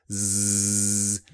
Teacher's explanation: /z/ is a voiced sound - vibration